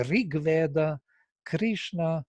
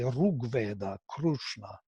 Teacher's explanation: In the north, they say Rig Veda, Krishna, and in the Maharashtra, they will say Rug Veda, Krishna, with U. Because if you pronounce it as a cerebral, then the next sound is natural U, Ru.